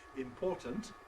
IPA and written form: ɪmˈpɔːtənt (important)